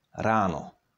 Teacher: That's because R in Czech is fully pronounced and has a lot of friction in it. Very similar to Scottish R.